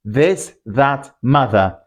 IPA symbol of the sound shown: ð